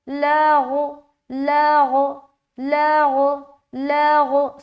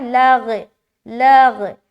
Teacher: غین جو حرف ہے نا یہ بھی موٹے حرف میں سے آتا ہے، لہٰذا جب آپ لام کو غین سے ملائیں گے نا تو موٹا معلوم ہونا چاہیے. جیسے کہ فَبَلَغُ لَغُ لَغُ لَغُ لَغُ.